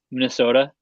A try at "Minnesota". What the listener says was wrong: You pulled out the Wisconsin accent to say Minnesota.